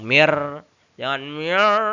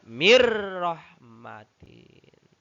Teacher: Suara nun sukun dimasukkan ke dalam huruf ro. Nun sukunnya dimasukkan ke dalam huruf ro. Dan tidak boleh didengungkan gitu ya. Jadi tanpa dengung. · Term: idgham bila guna